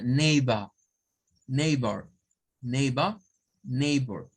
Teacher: debemos de tomar en cuenta que es un sonido de vocal con R.